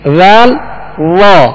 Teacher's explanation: وال کو باریک پڑھیں گے اور وا کو پر یعنی موٹا پڑھیں گے